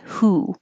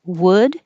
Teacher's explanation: your tongue's a little lower in the back and your lips are straight well you have to round for the w and then come